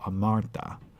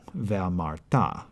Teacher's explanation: the accent is on the final syllable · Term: accented on the final syllable